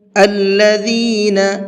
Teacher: الذین اذا اصابتهم مصیبہ، الذین، ذال کو بہت نرمی کے ساتھ میں پڑھنا ہے۔ ذال کے پروننسیشن کے اندر سیٹی نہیں ہوتی ہے ذرہ برابر بھی۔